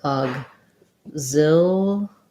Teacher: So that would sound like with a G, aug. The X says a G and a Z in this word